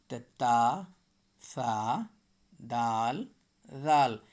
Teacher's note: اوپر کے 2 دانت یعنی ثنایا علیہ کو زبان کی نوک لگانے سے تا، سا، دال، زال نکلتا ہے